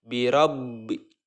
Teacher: Birob seolah-olah ba pertama disukunkan kemudian dilanjutkan ke ba yang berharakat kasroh. Birobbi. Nah, seperti itu, tahan kemudian lepaskan ke ba bertemu dengan huruf nun selanjutnya.